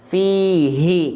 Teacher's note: H besar yang ini sama ini juga Tadi sudah kita bahas keluar dari pangkal tenggorokan ya makhrajnya dirasakan dari sana